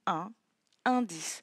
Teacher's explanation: le N se lie avec la voyelle d'à côté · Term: liaison